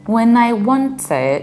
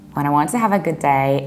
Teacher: when I want to, you pronounce T only once. Have a good day, you pronounce D only once due to elision.